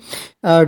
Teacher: और सघोष व्यंजन में क्या होता है कि स्वर तंत्री में ज्यादा कंपन होता है, और ज्यादा कंपन होता है तो आवाज काफी भारी हो जाती है।